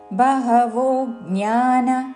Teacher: బహవో ఓ దీర్ఘము దాని మీద ఆఘాత